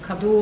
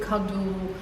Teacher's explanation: we change the pronunciation. We put the accent on the first syllable